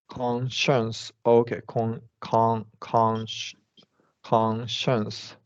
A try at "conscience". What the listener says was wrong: Correct. That's exactly right.